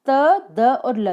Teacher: त, द और ल तीनों के उच्चारण में हमारी जीवा जो है वो दांतों से टच हो रही है, ठीक है, जबकि य के उच्चारण में ऐसा नहीं हो रहा है। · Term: दंत्य